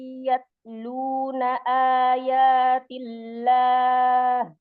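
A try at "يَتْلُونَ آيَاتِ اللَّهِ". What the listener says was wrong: Udah cukup. Udah ada keluar hamzahnya. Bagus.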